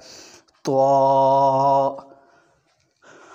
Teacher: یہ بھی موٹے حروف میں سے ہے، منہ بھر کے پڑھا جائے گا